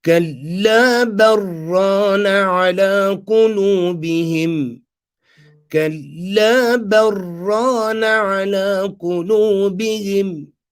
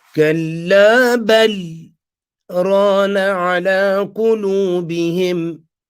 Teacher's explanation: we're going to do idraj by joining ba, fatha, and doing the idgham of the lam into the ra.